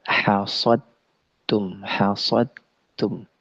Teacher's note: Jadi hasadtum sempurna masuknya ke dalam huruf ta disebut dengan idgham kamil